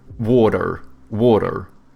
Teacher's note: You know how Americans, they have like soft T's and then they pronounce their R's